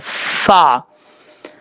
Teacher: اوپر والے جو دانت، اس کا مخرج سننے، اوپر والے جو دو دانت ہیں ان کا کنارہ نیچے والے ہونٹ کی تری والی جگہ پہ لگے گا تو فا پڑھا جائے گا فا، اس طریقے سے.